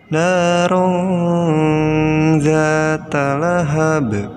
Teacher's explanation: Lihat ada ro tanwin, tanwinnya menghadapi zal. Nah, dibacanya jadi nunnya disamarkan disertai gunnah atau didengungkan ya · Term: ikhfa